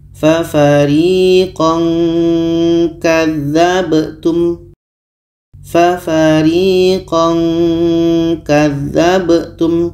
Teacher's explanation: Jadi ketika tanwin bertemu ka, ketika sebut huruf tanwin kita sudah merasakan huruf ka. Ka ini letaknya di pangkal lidah ya. Jadi kita baca fa fariqan kadzabtum. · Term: ikhfa